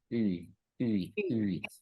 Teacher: itu dalam bahasa Prancis sebenarnya, itu bunyi I, tapi bibir kita harus monyong